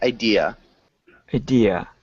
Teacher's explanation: make sure you don't have an R sound at the end